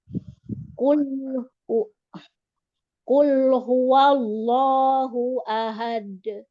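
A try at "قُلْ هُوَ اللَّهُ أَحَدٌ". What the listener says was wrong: masih tertekan. Masih tertahan. Ahade. Ini memang mungkin terbiasa tertekan sedikit ya.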